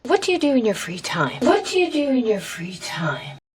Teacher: So, what do you do in your free time? With a falling intonation at the end.